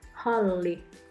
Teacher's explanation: letter H is slightly aspirated or there is a burst of breath meaning it is similar to the H in Hot For example